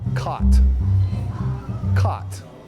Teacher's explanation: to some the vowels have merged